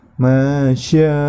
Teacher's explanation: di situ terdapat hukum bacaan mad wajib muttasil, maka dibacanya 5 harokat